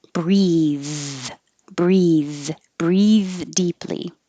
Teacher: If it's the verb, the vowel is E, and the TH is voiced.